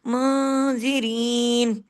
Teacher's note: यहाँ पे इख्फा हकीकी गुन्ना कामिला, नून साकिन के बाद जाल आ गया है